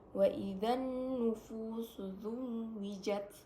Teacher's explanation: nun bertasdid disebut dengan guna musyaddadah karena nunnya bertasdid dan dibacanya didengungkan